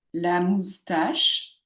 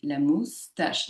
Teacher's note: La moustache, j'ai deux mots phonétiques avec mousse et tache accentuée.